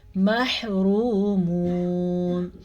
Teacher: یہاں پہ 2 واو مدہ ہیں. یہاں پہ واو ساکن سے پہلے پیش ہے تو اسے ہم کھینچ کے پڑھیں گے، واو مدہ ہے. یہاں واو ساکن سے پہلے پھر سے پیش ہے تو اسے بھی کھینچ کے پڑھیں گے، یعنی کہ میم زبر مح، را پیش واو رو، میم پیش واو مو، محرومون، نون زبر نا، محرومون.